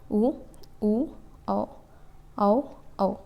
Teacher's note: जीभ का पश्च भाग जीभ का पिछला भाग से इसकी उच्चारण निकलती है